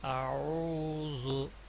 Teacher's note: ایک حمزہ ہے جو نرمی سے ادا کیا جاتا ہے، اور عین ہے یہ وسط حلق سے نکلتا ہے.